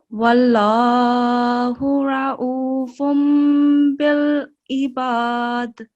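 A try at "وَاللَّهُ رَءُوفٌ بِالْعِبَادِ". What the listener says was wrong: So I think you struggle from the shortness of breath because of that you quickly go through the whole thing, right?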